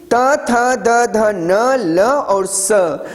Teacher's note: दंत अर्थात दांत। जब हवा दांत में टच करती है तो ये सारे वर्ण निकलते हैं।